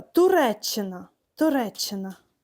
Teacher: коли ми запишемо це слово фонетичною транскрипцію, то буде лише один звук ч. І ставимо двокрапку в транскрипції. Отже, на один звук менше.